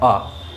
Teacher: उच्चारण के समय मुंह पूरा खुले। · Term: विवृत स्वर